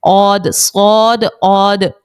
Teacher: موٹا پڑھیں گے اس کو، پیچھے سے جو ہماری زبان ہے وہ تھوڑی سی اوپر کی جانب اٹھے گی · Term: پر حرف